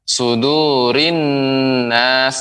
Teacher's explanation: alif lam syamsiah di sini an-nas, maka harus lebih diberi, kita menekannya sekitar kira-kira 2 harokat